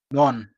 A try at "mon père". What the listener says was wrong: Are you pronouncing letter N? It is more. Mon père.